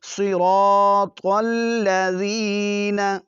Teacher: صاد موٹا پڑھیں گے، اگر باریک پڑھیں گے تو سین کی آواز نکلے گی ، طا کو موٹا پڑھیں گے تو تا کی نکلے گی، · ان دونوں حروف کو آپ نے موٹا پڑھنا ہے، صراط الذین، زال کو نرمی سے ادا کریں گے، سیٹی کی آواز بالکل نہیں